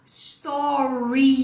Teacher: Na primeira, que é o story aqui do Instagram, você vai colocar um som de I no final. Você vai falar story.